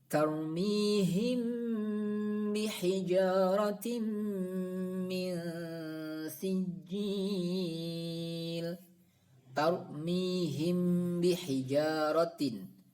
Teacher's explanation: Ikhfa Syafawi yaitu mim sukun bertemu ba mim sukun bertemu ba cara membacanya mim sukun tersebut dibaca dengung dan samar tidak jelas